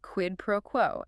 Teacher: Slight stress on quid and quo.